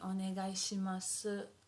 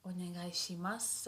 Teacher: So as if the u disappears